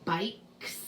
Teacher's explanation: K is unvoiced, so it's the S sound, bikes.